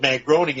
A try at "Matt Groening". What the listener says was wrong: That's Matt Groening. It's not. I don't think it's pronounced groaning, as in moaning.